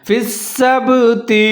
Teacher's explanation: با حروف قلقلہ میں سے ہے، یہاں پر آپ نے قلقلہ کرنا ہے